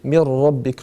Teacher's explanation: Donc on va dire mir rabbik. Le nun disparaît complètement, il est assimilé par le ra. Mir rabbik. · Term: idram bidun et runna